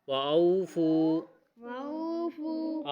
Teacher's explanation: او واو لین ہے اور اس کے بعد فو واو مدہ ہے، اس لیے دونوں کو تھوڑا سا لمبا کر کے فو کو زیادہ لمبا کریں گے